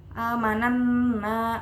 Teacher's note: guna musyaddadah karena Nun bertasydid Jadi dibacanya ditekan dan mendengung